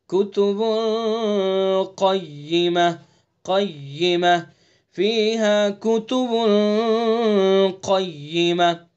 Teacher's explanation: با کے اوپر تنوین اور اس کے بعد قاف، اس کے اندر بھی اخفا کریں گے